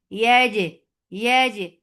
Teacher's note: Don't let any breath or sound flow in jim.